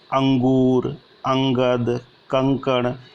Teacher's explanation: ये अनुस्वार ध्वनि जो है वो नासिका से बोली जाती है।